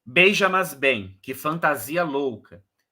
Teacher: o que importa é a quarta sílaba ser forte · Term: decassílabo sáfico